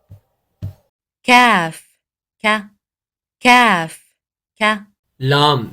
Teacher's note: اس کی ادائیگی زبان کی جڑ جب کوے کے قریب سخت تالو سے لگتی ہے تو قاف کی ادائیگی کی جاتی ہے، یعنی اس کا مخرج جو ہے وہ بالکل قاف جو ہے اس کے قریب ترین ہے، جیسا کہ کاف کا کاف کا۔